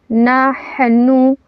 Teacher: حا کو ہم نے حلق سے ہوا مار کے نکالنا ہے